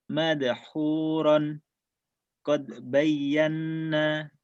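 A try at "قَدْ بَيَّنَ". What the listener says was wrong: Kodenya pantulkan. Kurang mantul tadi.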